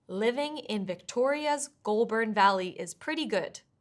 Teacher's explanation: the word Victoria's, where the stress needs to be on the second syllable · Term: word stress